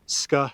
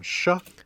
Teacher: we have palatalization that means scar has become sha